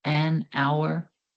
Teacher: The letter H in this word is silent, so it sounds like it starts with a vowel.